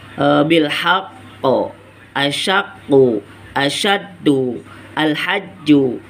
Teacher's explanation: Ataupun cara pengucapan, contoh seperti ini ya, ada huruf qalqalah di akhir kalimat atau diwakafkan, yang dimana huruf qalqalah itu ada tasdid, maka cara bacanya itu harus ditahan terlebih dahulu sebelum dipantulkan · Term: qalqalah akbar